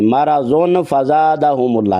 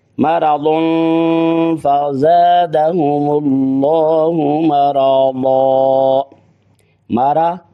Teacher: کے بعد آگے فزادہ میں فا کے اوپر زبر ہے، اور فا جو ہے حروف اخفا میں سے ہے، تو پھر ہم یہاں کیا کریں گے، یہاں غنہ کریں گے، اخفا کریں گے